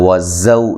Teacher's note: زا کو زور سے ادا کرنا ہے، سیٹی کی آواز ہونی چاہیے۔